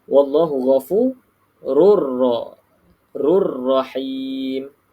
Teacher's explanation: maka baca tak dengung dan masuk ke dalam huruf sabdu